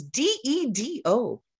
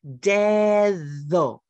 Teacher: that English sound of th when we voice it is the Spanish medial D sound